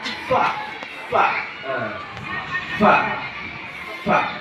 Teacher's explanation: Jadi kita menyebutkan mim itu harus bertemu ah dua bibir dulu supaya sempurna mim bertemu dua bibir juga ba min dan ba itu. Kemudian ada di bibir bawah e bertemu gigi seri atas ada fa